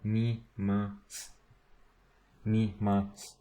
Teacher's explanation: This SU, it's su, but they generally pronounce it s, like mi mas.